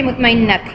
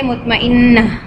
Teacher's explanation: whenever we will have ta marbuta, when waqaf comes, what we do, we make it ha and silent also, so it will become mutmainnah.